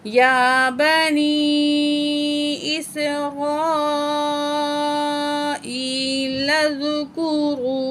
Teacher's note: واو ساکن ہے، پہلے الفاظ پر پیش ہے، واو مد ہے، 1 پوائنٹ کھینچ کے پڑھیں گے